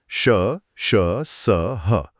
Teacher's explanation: इन्हें बोलते समय मुंह से हवा एक घर्षण एक रगड़ के साथ निकलती है। जिससे हल्की गर्म हवा यानी ऊष्मा पैदा होती है। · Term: ऊष्मीय व्यंजन